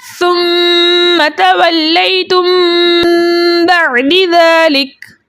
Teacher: हालत वक्त में काफ का ज़बर हज़फ हो जाएगा, कलमे का आखिरी हर्फ यानी काफ साकिन हो जाएगा और वक्त बनेगा वक्फ बिल इस्कान।